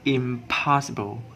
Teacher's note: m sound and p sound is in the same place of articulation, which is bilabial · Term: partial assimilation